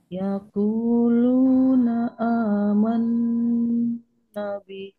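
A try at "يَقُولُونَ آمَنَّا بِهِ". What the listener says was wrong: Ah, kepanjangan. Yaquluna amanna bih.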